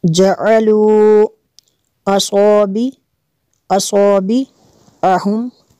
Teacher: جعلوا کے اوپر جو مد ہے مد منفصل ہے کیونکہ حمزہ دوسرے کلمے میں ہے۔